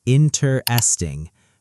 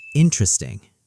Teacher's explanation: Slow version, four syllables, interesting. Fast version, almost three, interesting.